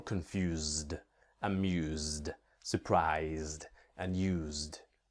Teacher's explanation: really the S has the sound of a Z it's not really an S here